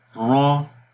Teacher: لمبا نہیں کریں گے اور موٹا پڑھیں گے۔ جب را کے اوپر زبر اور پیش آئے گی تو اس کو موٹا پڑھیں گے، اور جب را کے نیچے زیر آئے گی تو اس کو باریک پڑھیں گے۔